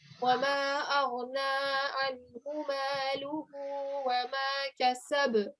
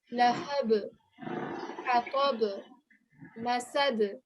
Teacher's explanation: at the end of each of these verses in this surah, we're meant to be giving a jerking sound.